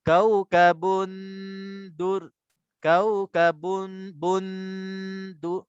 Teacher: Dengung mula-mula tu dia bunyi tanwin. Sekejap je bunyi tanwin terus masuk ke dalam dal. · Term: ikhfa haqiqi di sini kubra